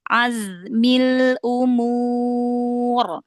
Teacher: Zainya dialirkan, sofirnya, rokhwahnya dialirkan.